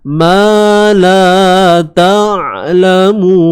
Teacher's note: untuk suara ain jangan kita putuskan dan jangan kita lepaskan terlalu panjang, dia tengah-tengah. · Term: sifat tawassut